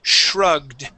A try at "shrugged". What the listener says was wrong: try and give me a d at the end there